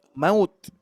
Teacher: Jangan mendekati ke bunyi o tapi u betul-betul jelas ya